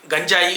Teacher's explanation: ఇద్దరు ముగ్గురు అంటుంటే నేను విన్నాను గంజాయి కాదు గంజాయి తాలవ్యం దంత్యం పలకాలి జ గంజాయి అని తాలవ్యం పలకూడదు గంజాయి దంత్యం పలకాలి